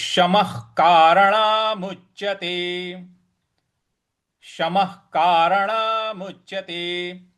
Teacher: म के आगे जो विसर्ग है उसके आगे क लिखा हुआ है। इसलिए विसर्ग का उच्चारण हम ख से करेंगे। जो क के बाद ख आता है ख।